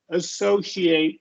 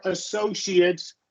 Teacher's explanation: the verbs are going to be long A, and the noun or adjective is going to be schwa sound